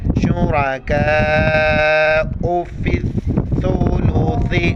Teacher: سا اور سا پر زبان باہر نکالیں گے